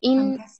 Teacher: नून के ऊपर तशदीद है, थोड़ा हम ठहरते हुए अदा करेंगे